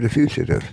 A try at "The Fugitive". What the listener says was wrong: The Fugitive. With a G. Not with a CH, not a fugitive.